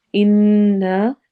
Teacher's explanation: نون پر غنہ ہوگا اور ساتھ ہی الف مدہ کریں گے، تو ہم دونوں کو لمبا کریں گے